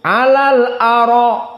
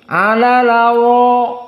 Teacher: Namun di sini di qiraah Wars, hamzah tidak dibaca. Dibuang dan didatangkan harokat hamzah fathah kepada huruf sebelumnya yakni lam. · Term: an-naql